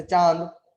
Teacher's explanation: अनुनासिक, अनुनासिक का उच्चारण स्वरों के साथ होता है। इसके उच्चारण में ध्वनि नाक व मुंह दोनों से निकलती है।